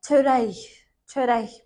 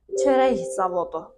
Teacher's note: milli mənşəli çox hecalı sözlərdə sözün sonunda k hərfi gəldikdə, ondan sonra heç nə gəlməsə, yəni boşluq olsa, boş qalsa və yaxud da ondan sonra samitlə başlayan söz və yaxud da şəkilçi gələrsə, bu zaman k x üstü ştrixə, yəni ixə çevriləcək